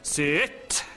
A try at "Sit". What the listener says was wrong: Sit. Sit. You don't say ter, you say t.